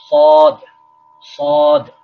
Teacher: سین کو موٹا کریں گے تو صاد بن جائے گا